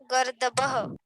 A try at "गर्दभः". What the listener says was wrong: गर्दभः, गर्दभः। भा बोलिए, भा, बा मत बोलिए।